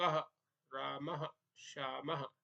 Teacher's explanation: विसर्ग का उच्चारण कैसे होता है? तो हकार जैसी ध्वनि रहती है इसकी